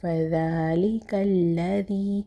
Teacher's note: فذلک الذی، یہاں پہ پھر ہمارے پاس یا مدہ آ گیا ہے، ذا کے نیچے کسرہ ہے اور یا سکون ہے اس کے بعد، تو یا مدہ ہوگا، ایک الف کے برابر کھینچ کے پڑھیں گے